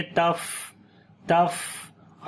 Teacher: فا کے اوپر صفت ہمس کریں گے، سانس جاری کریں گے